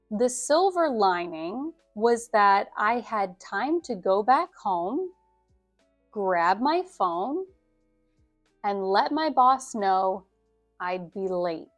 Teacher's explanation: Whenever we have a list like this, before each comma, the inflection stays raised, and you lower your inflection only at the end of the sentence. And this makes it really clear that you are listing things.